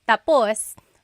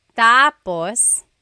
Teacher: when the emphasis is at the end tapos that means finished. When the emphasis is on the first syllable tapos then it means next.